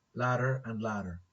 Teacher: Making contact, tapping. So it is produced by the tongue tip tapping, making contact with the alveolar ridge. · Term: flap